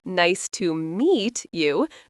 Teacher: English is a stresstimed language, which means certain syllables get emphasized. For example, in nice to meet you, the stress is on meet. This creates the rhythm.